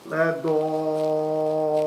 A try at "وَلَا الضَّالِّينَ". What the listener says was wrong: لا ضالون. Remember that lam has a shadda. لا ضالون. ولا الضا. ولا الضالين.